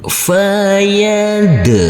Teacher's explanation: huruf Dal sukun kita pantulkan karena ini adalah bacaan qolqalah